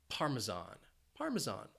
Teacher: that s has a z sound